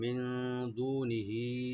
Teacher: মিন, এখানে নুন ইখফা, লাইট গুন্না করবেন।